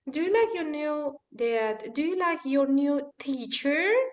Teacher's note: that rising intonation invites the speaker to continue talking it's normally used with yes or no questions